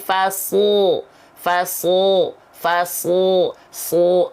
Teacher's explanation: lidah diangkat ke langit-langit ituulah yang disebut dengan sifat it maka huruf Shad itu dilafalkan sangat tebal bukan hanya perihal mengangkat pangkal lidah tapi hampir dominan lidah dilafalkan mengarah ke langit-langit